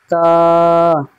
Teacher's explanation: জিভের আগা এবং সামনের উপরের দুই দাঁতের গোড়ার সাথে লাগিয়ে উচ্চারিত হবে তা